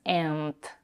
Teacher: she clearly releases the final consonant in and but she Dev voices it so and becomes and let's move on not necessarily always agreeing